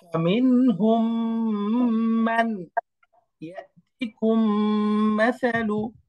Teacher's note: সাকিনের পরে মিম আসলে দুইটা মিমকে মিলিয়ে পড়তে হবে। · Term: মিম সাকিনের ইদগাম